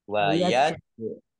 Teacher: Jim sukun, bacaan kol-kolah, ditambahkan pantulannya